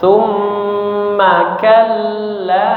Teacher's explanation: Tumma manya pendek ya, langsung disambung.